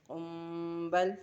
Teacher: कुम्बल, होंठों के साथ इख्फ़ाए शफ़वी करेंगे, कुम्बल। ठीक है, मीम से होंठों से हम इख्फ़ा करेंगे